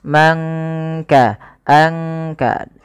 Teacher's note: Kemudian man kasaba, tidak kita baca man kasaba, tapi disamarkan suara nunnya kepada huruf kaf